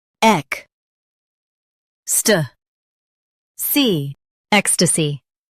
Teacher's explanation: Stress ek and soften stussy.